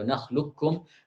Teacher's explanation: lisan langsung berpindah sekaligus, kata beliau, serentak dari lam langsung ke kaf. Jadi alam nakhluqukum, tidak ada sisa tebal dari kaf itu tidak ada. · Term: idgham total